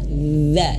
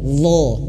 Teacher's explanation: Ujung lidah ini lidah menyentuh ujung gigi seri atas. Sama seperti kayak huruf dzal, sama makhrajnya sama, ya. Makhrajnya sama. Dza. Nah, yang membedakannya itu hanya tebal.